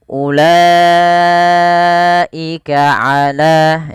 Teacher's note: La wajib dipanjangkan sepanjang empat atau lima harakat sebagaimana yang tadi kita Jelaskan Apabila ada Hamzah setelah tanda begini · hati-hati teman-teman dalam membaca ulaika, jangan dibaca panjang u-nya · la wajib dipanjangkan sepanjang 4 atau 5 harokat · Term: mad wajib